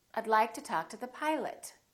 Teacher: the o in pilot becomes uh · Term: reduce